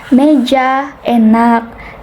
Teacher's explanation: madya, atas, depan dengan posisi mulut semi tertutup menghasilkan bunyi seperti meja, enak.